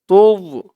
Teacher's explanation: এই জর উচ্চারণটা করার সময় মুখটা একটু ভরপুর হয়ে যাবে এরকম মনে হবে।